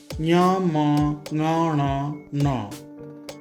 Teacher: ञ, म, ङ, ण, न नासिका की सहायता से बोले जाते हैं। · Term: नासिका स्थानीय वर्ण